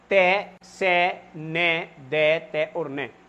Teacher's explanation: उच्चारण स्थान एक ही जगह है और वो है दंत